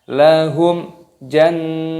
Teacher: nun tasdid, hukumnya dibaca gunnah. Gunnah itu artinya berdengung. Jadi cara membacanya didengungkan dan di sini nunnya dipanjangkan.